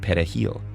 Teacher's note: to say the Spanish word for parsley Dominicans pronounce it pahil with a trilled Spanish R